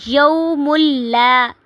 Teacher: تنوین کو لام کے ساتھ ملائیں گے